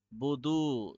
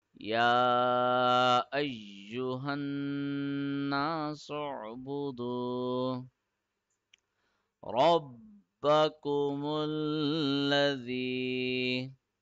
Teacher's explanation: Du will be stretched for 1 second because of the waw madar rule, which means that if a letter has a dhamma on it and the next letter is waw with sukoon, we stretch that letter for 1 second, and that's called waw madda.